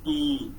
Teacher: when we produce E, our lips are not rounded, they are unrounded